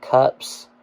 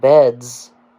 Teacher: cups has an S sound but beds has a Z sound